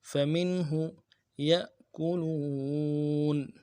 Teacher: یا میں حمزہ کے اوپر جھٹکا دیں گے، یا کو حمزہ سے ملانا ہے جھٹکا دے کے